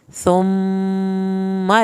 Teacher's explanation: मीम की शत पे एक अलिफ के बराबर देर लगाएंगे